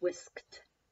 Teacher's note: That T sound. Still adding ed, but it sounds like a T.